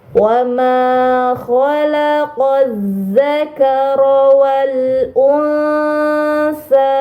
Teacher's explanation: alif lam bertemu huruf z ini dinamakan alif lam syamsiah maka Alif lamnya tidak dibaca ya langsung dibaca ke huruf